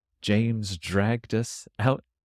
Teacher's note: the DR sounds more like a J, drag. James dragged.